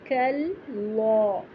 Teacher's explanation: کاف نہیں موٹا کر دیں گے، صرف لام موٹا کریں گے